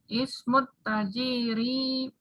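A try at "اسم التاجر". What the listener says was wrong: Ismut tajiri, taknya yang panjang.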